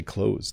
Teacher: You don't say the th at all.